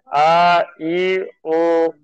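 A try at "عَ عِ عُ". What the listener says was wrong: জি হামজার মতো হয়ে যাচ্ছে, আ ই হবে না, আ ই উ এমনটা হবে না। আইন উচ্চারণ করতে হবে, গলার ভেতর থেকে আইন উচ্চারণ হবে জি।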